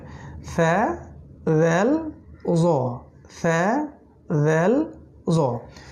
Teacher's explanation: second group হচ্ছে জিহ্বার অগ্রভাগ এবং দাঁতের নিচের অংশ থেকে 3টা অক্ষর বের হয়